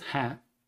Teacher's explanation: the verb is in plural, that is hain. It has nasalization for plural.